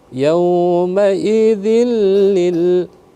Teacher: karena di sana kasratain bertemu dengan lam dia tidak tidak didengungkan